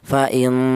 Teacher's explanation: huruf nun ini dibaca dengung panjangnya yaitu dua harakat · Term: ghunah